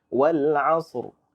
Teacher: Sa tebal, ra pun baca dengan tebal. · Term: ra tebal